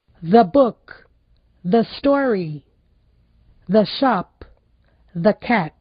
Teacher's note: Então, o outro caso, que é o caso onde antes de consoante aquele E tem o som parecido com o nosso A